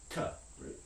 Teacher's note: a voiceless coronal stop